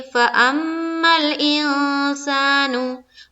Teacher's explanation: اور میں پچھلی بہت ساری کلاس میں بتاتی آ رہی ہوں کہ جب بھی میم کے اوپر شد یعنی کہ تشدید آئے یا نون کے اوپر تشدید آئے، یہ دو حرف کے اوپر کبھی بھی تشدید آئے گا تو وہاں پر گننا کریں گے، یعنی کہ ناک میں آواز کو تھوڑی دیر روکیں گے